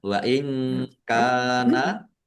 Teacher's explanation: nun sukun bertemu dengan huruf kaf, bacaan ikhfa, dibaca samar-samar. Kaf fathah alif mat tabi'i, panjang 2 harokat.